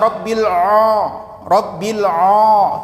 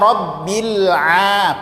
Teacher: Sedangkan huruf tipis, maka dibaca rabbil a. Posisi lidah dia terdampar saja di bawah, ya, tidak terangkat sedikit pun dari pangkal lidah. Maka dia bersifat istifal.